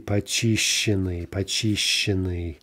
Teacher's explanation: The st is going to mutate as a cluster to sh, right? And we get the stress, obviously, is back on the stem. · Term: cluster mutation